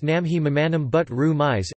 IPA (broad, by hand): nɒˈme-ye mɒˈmɒn-æm bud ru miz